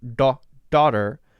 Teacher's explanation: So the Indian D sound is farther in the back of the mouth and hits the top of the soft palate.